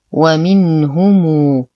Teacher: لدينا نون ساكنة وبعدها حرف الهاء الحكم إظهار حقيقي مع غنة ناقصة. نتم ضمة الهاء ونصل الميم الساكنة بواو مادية مشبعة تمد بمقدار 6 حركات لأنها سبقت بهمز.